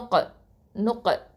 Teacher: காஃப் வந்து பார்த்தீங்கன்னா இது வந்து அக்கசல் லிசான் அப்படின்னு சொல்லுவோம் கீழ் தொண்டை எழுத்து இது வந்து காஃப்ல சுகூன் இருக்கிறதுனால இங்க என்ன பண்ணுவோம் கல்கலா சொல்லுவோம் இது